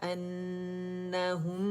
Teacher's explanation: نون مشدد، ہر غنہ مشدد، اکمل grade کا غنہ کریں گے